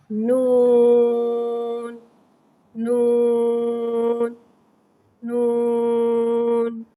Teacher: नून हुर्फ़े तरफिया है, ज़बान का किनारा और अनाया से तनाया तक के दांतों की जड़ से अदा होता है।